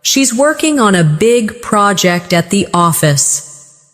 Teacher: Stress, working, big, project, and office. This will help you speak with a natural English cadence instead of sounding too flat or robotic.